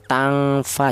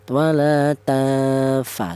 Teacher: Adapun ini ifaknya ini adalah ifa ausat ifa yang pertengahan tidak terlalu dengung juga tidak terlalu samar